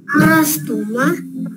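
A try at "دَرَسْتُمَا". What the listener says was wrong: Naam, maknya panjang, ulangi.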